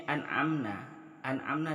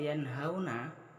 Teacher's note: Di sini an'amna di sini nun matinya bertemu dengan ain. Apabila ada nun mati atau tanwin bertemu dengan huruf ain, maka di sini hukum bacaannya adalah idhar. Maka cara bacanya itu adalah jelas.